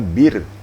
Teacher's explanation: Tapi kalau baris bawah sebelum ra mati, contohnya bir, memang tipis, memang tarqiq.